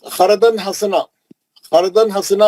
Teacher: اور دوسرا جو ہے خردن حسنا، فردن حسنا میں جو ہے تنوین کے بعد ہا ہے، اخفا کرنے کی ضرورت نہیں ہے، اظہار ہے